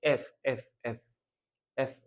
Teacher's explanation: নিচের যে ঠোঁট আছে, উপরের দাঁত আছে। এই দাঁতে ঠাস করে আমরা এই উচ্চারণটা করব।